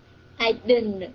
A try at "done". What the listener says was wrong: Done. Done, là như cái này nè. Done. Đừng có didn't nha, không phải là cái didn't. Nó là done.